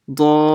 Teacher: So I'll stretch it for 6 harakahs, which is 5 alifs. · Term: Madd Lazim